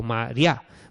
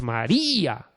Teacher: tenemos una vocal cerrada tónica, que es la I, y una abierta átona, que es la A, María. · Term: hiato